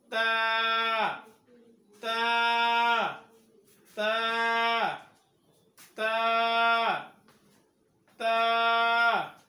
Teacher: তা হরফ উচ্চারণ করার সময় জিহ্বার আগাটা উপরের দাঁতের গোড়ার সঙ্গে লাগাইতে হবে।